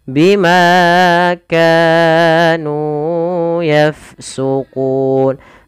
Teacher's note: Ini kepanjangan, cukup 2 harokat saja.